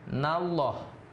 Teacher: bunyinya Allah itu lebih tebal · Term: lam jalalah